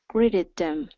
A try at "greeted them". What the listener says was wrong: Okay, give me a good TH instead of them.